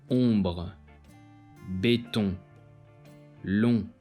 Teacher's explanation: This sound is exactly like a regular O, but with the air flowing through the nose as well as the mouth.